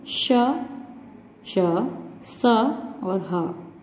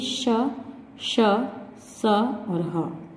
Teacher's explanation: जिन व्यंजनों का उच्चारण करते समय वायु रगड़ खाती है, रगड़ खाती हुई मुख से बाहर आती है जिससे ऊष्मा उत्पन्न होती है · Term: ऊष्म व्यंजन